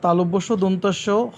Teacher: তালব্যস্ব, দন্তস্বকে শীষ ধ্বনিও বলা হয়, কারণ এগুলো উচ্চারণে সাপের মতো শীষ হয়।